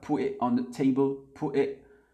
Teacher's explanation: faites attention à la prononciation, surtout du T, il y a beaucoup de glottal stop